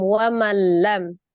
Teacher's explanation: Di situ ada waman lam, nun sukun bertemu dengan huruf lam, tasdid. Berarti cara membacanya adalah nun tasdid, nun sukunnya dihilangkan ya. Jadi langsung ditasdidkan ke huruf lam, wamallam. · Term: idgham bila gunnah